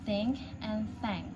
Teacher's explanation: It's categorized as voiceless sound. The place of articulation is dental because the tongue touches the teeth, and manner of articulation is fricative. The explanation, the sound is produced by placing the tip of the tongue between the upper and lower teeth and pushing air out gently without using the voice.